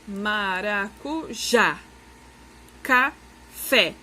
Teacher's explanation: oxítona vai ser a última sílaba mais forte